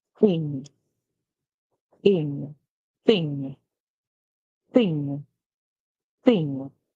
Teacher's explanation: we get our tongue between our teeth